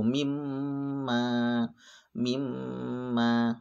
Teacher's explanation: tidak boleh dibaca mim ma gitu enggak boleh maka harus panjang satu Alif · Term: dengung